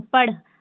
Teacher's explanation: तो ह का साउंड हल्का आता है बाद में